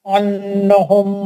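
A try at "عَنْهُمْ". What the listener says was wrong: हाँ, आपको जहाँ गुन्ना नहीं वहाँ गुन्ना पकड़ने का क्या शौक हो रहा है भाई? अन्नहुम में गुन्ना नहीं है. अनहुम में गुन्ना नहीं है वहाँ. जी, आप कर रहे हैं. भाई आप ये बताइए मुझे कि क्या आपकी कोई दोस्ती हो रही है तशदीद से?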